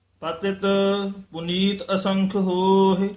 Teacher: ਇਹ ਪਤਿਤ ਪਦ ਤੇ ਯਮਕ ਲਾ ਕੇ ਉਚਾਰਨ ਕਰਨਾ